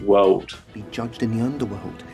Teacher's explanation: Instead of world, he changes that final L to a W